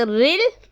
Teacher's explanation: را لام سے رل، اس را کو باریک پڑھنا ہے کیونکہ را کے نیچے زیر ہے